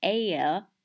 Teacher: vowel shift where the one syllable words like air come out in two syllables